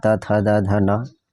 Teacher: और त वर्ग में दंत से होता है